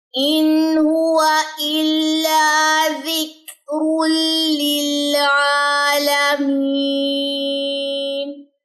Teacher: نون ساکن کے بعد ہا ہے، حروف حلقی میں سے ہے، یہاں پہ غنہ نہیں ہوگا۔ اگر غنہ نہیں ہے اس کا یہ مطلب نہیں کہ جلدی پڑ جائے اور اس پہ کلکلا کر دیں ان، تو یہ بھی طریقہ غلط ہے، سٹے ہوگا۔ · لام کی وجہ سے تنوین چاہے آ رہی ہے لیکن غنہ نہیں ہوگا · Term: ادغام بلا غنہ